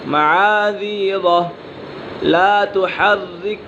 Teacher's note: یہاں پر را مشددہ باریک پڑھی جائے گی، را مشددہ کے نیچے زیر ہے اسی وجہ سے را مشددہ باریک پڑھی جائے گی